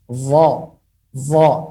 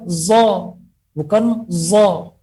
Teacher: Adapun huruf dha dengan cara membulatkan mulut karena dia memiliki sifat itbaq dan sifat isti'la.